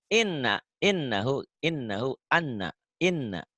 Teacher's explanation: Jangan ditahan i-nya, yang ditahan n sama m-nya ya. Kayak ini. Jangan i-nya yang ditahan, i-nya kan pendek.